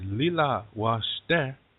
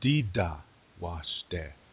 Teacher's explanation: Where we have L sounds, the Dakota replace that with a D.